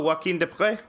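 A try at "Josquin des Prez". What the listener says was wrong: Desprez? Is it Desprez? Josquin de Prez. Josquin with the S is not silent.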